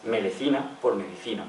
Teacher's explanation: Paso de la dental D hasta L o R simple.